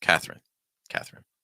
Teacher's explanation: notice that that e is just not even gonna be pronounced typically just completely reduced